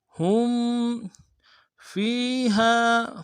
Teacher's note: ہم میں ہا کو میم ساکن کے ساتھ ملانا ہے، میم ساکن میں غنہ ہوگا